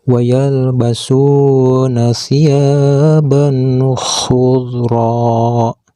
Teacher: Maka tanwin fathahnya itu harus dibaca jelas seperti membaca huruf N. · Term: idhar